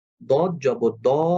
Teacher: দ জবর দ অ সাউন্ড যখন আসছে তখনই এটা মোটা হরফ